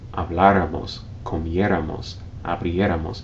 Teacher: in the case of the nosotros or nosotras forms, when you stress the third to last syllable